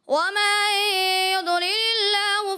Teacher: ضاد میں تھوڑا سا ہلکا سا کلکلا بھی محسوس ہوا